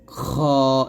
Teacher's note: এটা হবে খ দুই জবর খন তো গলার মধ্যে শেষ থেকে গলার বা কন্ঠনালীর শেষ হইতে আমরা খটা মোটা করে উচ্চারণ করব